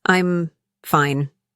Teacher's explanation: Said with a flat, low pitch and slow pace. "I'm fine." Implies boredom, annoyance, or definitely not fine.